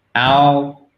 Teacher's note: vous avez une voyelle longue, votre A long, qui est entre le A et le O.